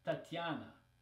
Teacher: Tatiana, Tatiana. So in Russian, it's not E, right? It's just this soft T and then a ya after.